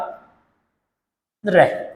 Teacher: रे का उच्चारण करते समय जीवा को एक से अधिक बार कंपन करना पड़ता है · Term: परकंपित